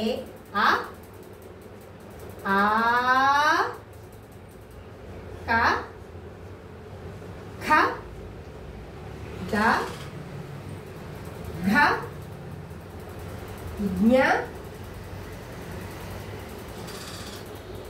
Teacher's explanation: ఇవి కంఠ భాగం నుంచి పుట్టుకొచ్చినాయి కాబట్టి వీటిని కంట్యాలు అని అంటారు